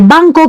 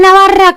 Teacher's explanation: Porque, por ejemplo, esa N que vemos en este ejemplo con rabito de mono, existe en español, es la N de banco, que es una N nasal que se pronuncia más atrás